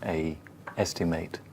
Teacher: It's a diphthong, a, as in opus dei, almost.